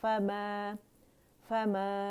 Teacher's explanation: فا باریک ہے میم کی آواز میم بھی باریک ہے اور الف ممدودہ جو ہے یہ اس کی آواز کے اوپر